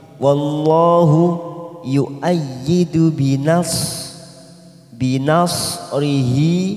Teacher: Wallahu lam jalalah didahului fathah, kita baca tafkim